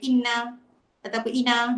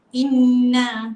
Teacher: Nun sabdu dengan mim bersabdu mesti dengung dua harakat.